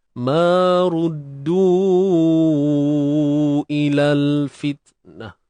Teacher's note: Untuk du tu panjang dia 4 atau 5 harakat lah.